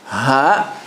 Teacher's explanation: So this one, ha, is deeper in the throat, closer to the chest. Its makhraj is deeper down in the bottom of the throat, closer to the chest. It vibrates the chest actually if you say it correctly.